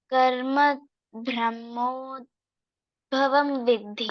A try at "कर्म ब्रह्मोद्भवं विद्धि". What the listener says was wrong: See, your pronunciation is coming brahmo, not brahmodbhavam. कर्म ब्रह्मोद्भवं विद्धि. कर्म ब्रह्मोद्भवं विद्धि.